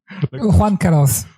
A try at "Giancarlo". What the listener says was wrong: Ouais, non, Giancarlo. C'est pas Juan, c'est Gian. G-I-A-N.